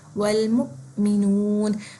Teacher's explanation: میم کے بعد جھٹکا آئے گا اور وہ حمزہ کی آواز کر کے آئے گی. والمؤمنون, اس میں آواز کے ساتھ سانس نہیں توڑنی, سانس چلنی ہے.